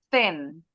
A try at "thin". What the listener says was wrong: Masih T. Kurang dikit lagi, dikit lagi. Ujung lidahnya keluar.